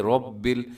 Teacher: جب را کے اوپر کوئی حرکت ہوتی ہے را موٹی ہوتی ہے، رب ایسے منہ بھر کے آپ نے اس کو پڑھنا ہے